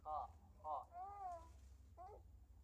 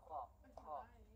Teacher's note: mengucapkan makhraj huruf ho ya, di kerongkongan bagian atas